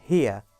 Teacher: The starting point for this diphthong is a little closer than I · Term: ia diphthong